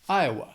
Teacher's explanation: That second syllable has that schwa.